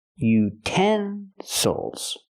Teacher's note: now we have a word with three syllables we stress the second syllable